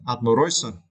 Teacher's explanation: for the word admiration in noun form, you need to stretch the third syllable